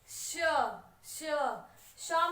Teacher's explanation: श में आपका तालू फिर से लग रहा है तो श होगा आपका तालव्य